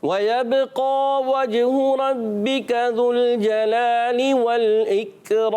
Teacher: اکرام میں کاف کو باریک رکھنا ہے